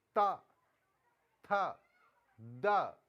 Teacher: जो हमारी जीवा है वो दांत से छुएगी। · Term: त वर्ग